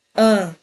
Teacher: Isso é um dígrafo vocálico. Eu tenho a letra A seguida da letra M e tá formando um único som anasalado.